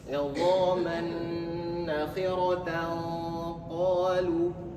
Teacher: Jadi samar-samar. Tannya tidak bunyi jelas. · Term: ikhfa hakiki